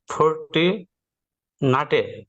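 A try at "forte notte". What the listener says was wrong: ফর্তি, আবার ওই ইংলিশে যাচ্ছেন কেন, ফর্তি, আবার বলে নাথে, ফর্তি নাতে না, এটা তর উচ্চারণ, ত, তুমি তুমি এরকম হবে, নাতে, হ্যাঁ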